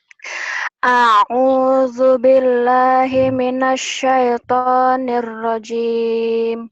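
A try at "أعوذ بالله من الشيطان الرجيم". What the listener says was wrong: Jangan ke hidung ya? Jangan ke hidung. Suaramu jenisnya udah bagus, tapi jangan dikain. A'udzu billahi minasyaitonir rajim. Artikulasinya dibuka. A'udzu billahi.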